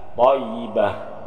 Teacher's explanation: Jadi yang mati bukan ta tapi ha. Thayyibah bunyi ha.